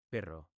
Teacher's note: Yo hago vibrar la lengua, como un motor pequeño. Si no sale, prueba decir te de rápido, y luego agitas un poco en ro.